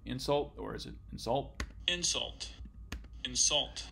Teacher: in the first example stress is on the first syllable insult and the second stress is on the second insult